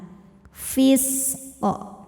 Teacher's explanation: Huruf sin kita alirkan dan ada desisnya ya. Karena punya sifat namanya shofir. Artinya ada desis seperti suara ular. Fis. Nah, kemudian qof-nya ini hukumnya qalqalah kubra karena ada huruf qalqalah yang sukunnya karena berhenti dan dibacanya dipantulkan dengan pantulan yang besar.